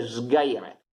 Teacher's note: Cosa succede? Che la S, siccome la G è sonora, allora la S è sonora anche quella, quindi si dice sgaire.